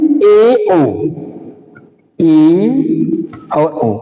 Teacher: जिन स्वरों का उच्चारण करने में मुख द्वार आधा बंद रहने का काम करता है उसे कहते हैं अर्धसंवृत।